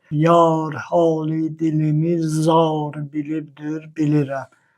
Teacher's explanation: Füzuli yar və zar sözlərindəki a saitini uzadıb və r samiti tələffüzdə ondan ayrılıb. Əgər biz onları yar və car kimi oxusaq, onda vəz qırıqlığı əmələ gələcək. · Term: uzun sait